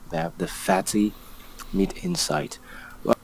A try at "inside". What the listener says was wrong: And it's inside, not in sight.